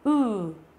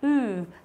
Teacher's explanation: mình lại chu miệng ra và mình lại đọc dài hơn so với chữ u bình thường của mình. Chữ u bình thường mình chỉ đọc là u thế thôi đúng không, nhưng chữ này đọc là ừ.